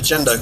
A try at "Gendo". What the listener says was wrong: Oh, and it's pronounced Gendo, actually. It's hard G. Gendo.